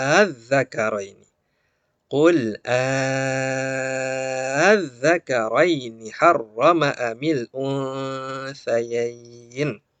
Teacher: Ya, nanti ada cara membaca yang berbeda, tapi kita di sini panjangkan dulu, ya panjangkan dulu, kita ambil yang panjang 6 harokat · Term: mad farqi